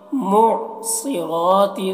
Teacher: صاد کو موٹا کر کے پڑھتے ہیں اور را کو بھی. معصرات ماء، میم میں مد ہے تو اسے کھینچیں گے.